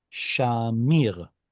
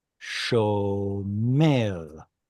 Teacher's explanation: Canaanite shift turns A to O, and original chirik, or I vowel, in Hebrew often is represented by tzere.